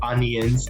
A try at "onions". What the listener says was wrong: We don't say the I really at all. We say UN.